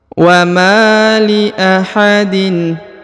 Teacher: huruf ma dipanjangkan 2 harokat karena di depannya terdapat alif ya